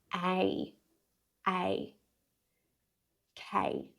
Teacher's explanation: K, that starts off with the K sound, and then again that A diphthong.